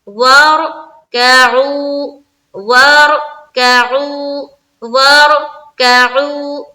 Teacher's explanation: رائے ساکینہ سے پہلے زبر یا پیش ہے تو رائے ساکینہ کو پر پڑھیں گے یعنی کہ موٹا کر کے پڑھیں گے